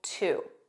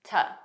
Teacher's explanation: two is the standard pronunciation and T is the unstressed pronunciation that's commonly used by natives in natural speech